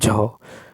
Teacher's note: तालव्य महाप्राण घोष व्यंजन वर्ण का उदाहरण झ है